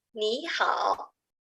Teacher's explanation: because it's a double third. First one have to change second tone.